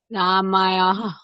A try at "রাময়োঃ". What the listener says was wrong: না, রাম ইয়ো। হুম, মানে আপনি বাংলাতেই যদি বলেন রয়াকার ম অন্তঃস্থ ইয়কার, তাহলে অন্তঃস্থ ইয়কারটাকে আপনি ইয়ো বলবেন। হ্যাঁ, তাহলে রাম যখন উচ্চারণ করবেন রাম, তারপরে একটা হালকা পজ করবেন, রাম ইয়োহ।